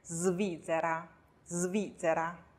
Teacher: s▁后面呢又紧跟着。b▁d▁g▁l▁m▁n▁r▁和▁v▁这样的浊辅音，这个时候▁s▁发浊音